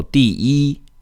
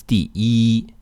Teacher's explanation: If in a word, yi is the last character, for example, in the word 第 一, yi is the last character in the word, then it stays in the first tone. So 第 一 doesn't change tones.